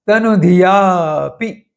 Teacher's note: अब यहां जो अवग्रह चिन्ह बताया गया है जिसमें थोड़ा दीर्घ उच्चारण करना है। या के बाद थोड़ा अंतर रखकर पी बोलना है।